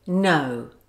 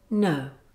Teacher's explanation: When this sound is part of the diphthong, it's not a completed ʊ sound because the two sounds together must be smooth. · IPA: /əʊ/